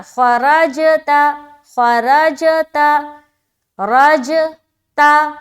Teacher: जीम में हम कलकला कर रहे क्योंकि जीम हरूफ कलकला में से है